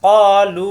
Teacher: কা হবে না, ক জিব্বার গোড়া থেকে, কলু মাদের হরফ একালিপটান।